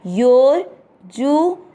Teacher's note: यो के बाद में अवग्रह है, आपको यो की मात्रा को लंबा खींचना है। यो जू के ऊपर जो आधा र की मात्रा दिख रही है उसको लंबा खींचते हुए यो को बोलिए योर जू, न में अ मिक्स करना योर्जुन।